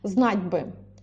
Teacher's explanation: Знать ударно, бы вообще безударно.